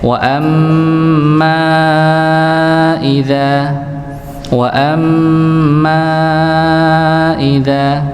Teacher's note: Mimnya dibacakan empat empat harakat atau lima lima harakat. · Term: mad jaiz